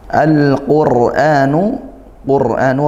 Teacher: ro sukun dahului dommah dibaca tafkhim